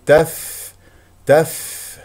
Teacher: بعدها حرف مشدد وما تفعل افتح الفم في الالف تف تف هواء مع الفاء همس لان حرف الفاء ضعيف ويحتاج الى هوا لكي نسمع صوت حرف الفاء